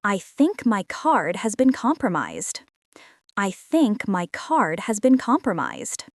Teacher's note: Notice the stress on think and compromised.